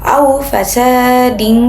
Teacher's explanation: suara tanwin dibaca samar dan didengungkan, tidak dibaca secara jelas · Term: ikhfa